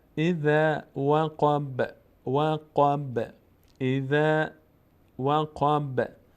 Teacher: با اینجا باز قلقله میشه، یعنی مقداری در مخرجش میلرزه. نمیگیم وقب نه، وقب زیاد هم حرکت نمیدیم که زیاد هم نمیلرزونیم که حرکت کسره بگیره.